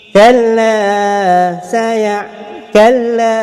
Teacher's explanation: Kalla kalla, 2 harakat. Tak ada dengung, jelas. Kalla, 2 harakat sebab alif martabi yang tadi ada kat sini.